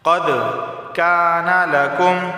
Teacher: قد قلقلہ ہوگا کیونکہ دال حروف قلقلہ میں سے ہے